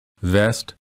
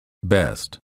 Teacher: a hard time distinguishing between the B and the V remember for the V sound the upper teeth touch the lower lip for the B both lips touch and fully close so that no air escapes